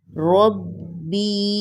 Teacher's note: را کو موٹا پڑھیں گے اور زور دے کر با کے ساتھ ملائیں گے